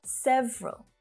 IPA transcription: 'sev (ə) rəl